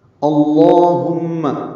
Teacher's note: لام اسم جلالہ پر پڑھیں گے، اور اللہم کا جو حمزہ ہے وہ عارضی ہے